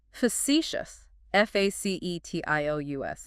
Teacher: Facetious, 3 syllables, stress on the second one.